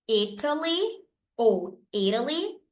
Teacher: vogais eu tenho aqui a letra i e a letra A o t entre vogais ele acaba assumindo um som de R